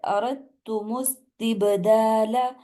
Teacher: با کے اوپر کلکلا کرنا ہے، سین کو واضح کرنا ہے